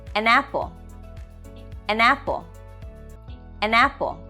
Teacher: let's start with number one catination or linking continuation happens when a consonant sound at the end of one word gets attached to the first vowel sound at the beginning of the following word